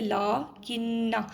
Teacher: یہاں پہ غنہ کریں گے چونکہ نون کے اوپر شد ہے، پہلی نون ساکین ہے، دوسری نون متحرک ہے، تو ہم اس کو پڑھیں گے لا کنہ.